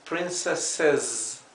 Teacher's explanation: tiene una doble s que se pronuncia suave s y una s sola al final que se pronuncia con zumbado z